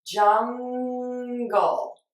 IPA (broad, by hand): ˈdʒʌŋ.ɡəl